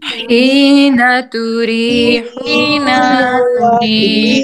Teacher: नून की जबर को आपने बढ़ाना नहीं है। हीना तुरीहूना वहीना, ये रॉन्ग है।